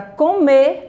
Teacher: E na palavra comer, a sílaba tônica me.